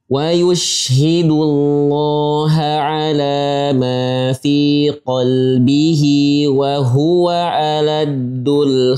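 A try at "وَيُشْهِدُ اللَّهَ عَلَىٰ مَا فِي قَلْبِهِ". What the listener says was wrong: Ulang lagi kerana ada suara ain sedikit di Hamzah.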